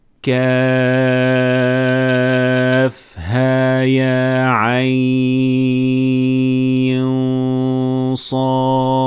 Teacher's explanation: Notice how quickly I went from ha and ya, because both of them are only getting natural med.